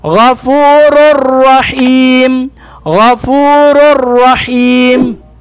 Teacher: Idgham kamil bila gunna. Kompletong idgham na walang gunna.